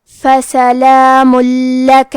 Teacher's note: لام حروف الادغام بغیر غنہ میں سے ہے، تو ہم تنوین کو لام میں ملا کے بغیر غنہ سے لیکن تشدید کے ساتھ یہ حکم کو ادا کریں گے